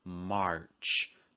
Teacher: you need to pronounce the R here in American English